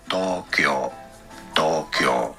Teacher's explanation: it is normally pronounced there in Japan as Tokyo, Tokyo, two rather long O's.